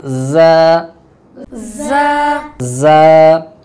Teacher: ज़ा जो है जब ज़ुबान आपके दोनों दांत, ऊपर वाले 2 दांत और नीचे वाले 2 दांत, इसके दरमियान में ज़ुबान आएगी तो वहाँ से ज़ा अदा होगी